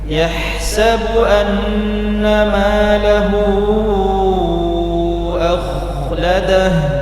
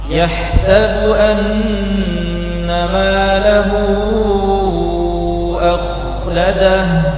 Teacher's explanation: jadi kha sukun di rokhawah ya, diberi kadar 1 harokat mengalir.